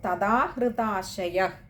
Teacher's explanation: വിശ്ലേഷണമുണ്ട് പിന്നെ ചില ഗ്രന്ഥങ്ങളിലെ പാഠഭേദം ഇനിയുള്ളതിൽ വരുന്നു തഥാഹൃതാശയ അവിടെ ചില ഗ്രന്ഥങ്ങളിൽ വിസർഗം കൊടുത്ത് അവിടെ നിർത്തിയിരിക്കുകയാണെങ്കിൽ അവിടെ പകുതി ഹകാരത്തിൽ വായിക്കുക